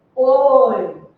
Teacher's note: Então, tem um ditongo, OI, mas o som não é aberto.